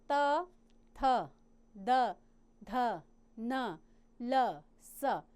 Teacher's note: तो जो दंत को जीवा स्पर्श करती तो दंत ध्वनियाँ कहलाती हैं। इनके अंतर्गत आते हैं बच्चों त, थ, द, ध, न, ल, स।